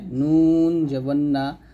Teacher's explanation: তারপর লাম হরফটা আমরা জিহ্বার আগা সামনের উপরে মারি দাঁতের সঙ্গে লাগাবো, জিহ্বার আগার কিনারা, লাম উচ্চারণ করার সময় জিহ্বার আগার কিনারা উপরের মারি দাঁতের গোড়ার সঙ্গে লাগিয়ে লামটা উচ্চারণ করতে হবে, লাম জবল্লা। আর নুন জিহ্বার আগা তার বরাবর উপরের তালুর সঙ্গে লাগবে